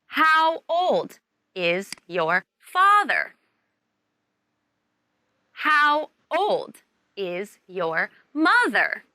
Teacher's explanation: in these questions the key words are how old and the noun father or mother and you should use a falling tone